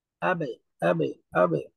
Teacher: আবে কলকলা শব্দের মাঝখানে হালকা করে উচ্চারণ হবে কলকলাটা